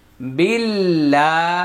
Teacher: আল্লাহ শব্দের পূর্বে এখানে জের আসছে। আল্লাহ শব্দের পূর্বে যদি জের থাকে তাহলে আল্লাহ শব্দের লামের উচ্চারণ পাতলা হয়।